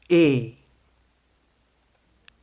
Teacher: La voyelle est toujours ouverte détendue.